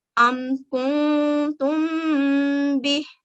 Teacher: میم ساکن کے بعد با ہے تو ہم یہاں پر ہلکا غنہ کریں گے